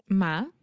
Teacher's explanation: Moscow. Okay, so the first sound is ma with a very open a